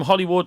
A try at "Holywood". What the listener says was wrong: No, our point is that Hollywood in Northern Ireland should be pronounced Holywood.